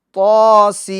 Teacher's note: جو طا ہے اس کو ایک الف کی مقدار کھینچیں گے، اور سین اس کو 3 الف کی مقدار، یعنی اس میں مد لازم ہوگا، تو لہٰذا 3 الف کی مقدار کھینچیں گے، طاسین۔